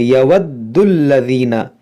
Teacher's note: یہاں پر دیکھیں دال مشدد ہے تو اس کو خوب جماؤ کے ساتھ پڑھیں گے